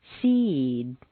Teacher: the preceding vowel is said more slowly and on a double stair step